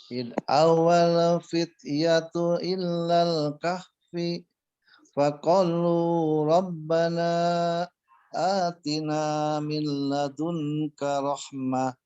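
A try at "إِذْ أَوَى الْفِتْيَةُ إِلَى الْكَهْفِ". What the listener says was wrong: Di kahfinya kalau bisa disambung ke huruf setelahnya ya. Jadi kalau mau berhenti di sana, aturannya adalah harus dimatikan.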